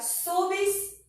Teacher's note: a gente não separa o I e o A, porque a sílaba tônica é a sílaba anterior